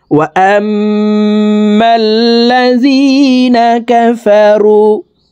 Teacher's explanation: মিমের সাথে নাকের বাসি থেকে 3 সেকেন্ড পরিমাণ গুন্নাহ করে ধরে রাখবো। এই গুন্নাহকে ওয়াজিব গুন্নাহ বলা হয়, কারণ হারকতের বামে নুনে মিমে তাসদিদ হইলে সর্বাবস্থায় নাকের বাসি থেকে 3 সেকেন্ড পরিমাণ গুন্নাহ করে পড়তে হবে।